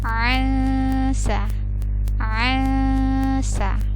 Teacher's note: ada nun sukun bertemu sa, hukumnya ikhfa, maka dibacanya samar juga